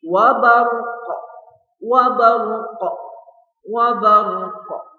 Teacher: maka huruf qaf berubah menjadi sukun dan juga tentu saja memantul karena qaf adalah salah satu huruf qalqalah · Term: qalqalah kubro